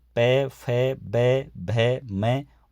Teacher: ये ओष्ठ से उच्चरित किए जाते हैं